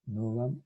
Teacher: Esta O breve corresponde a una O abierta. Novam, O abierta.